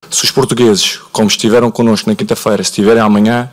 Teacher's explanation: European Portuguese's relatively flat pitch in unstressed syllables and a raised pitch in stressed syllables, with a slight falling intonation at the end of sentences